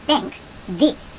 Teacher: 혀를 이빨 사이에 끼우고 바람을 빼는 the 소리가 난다고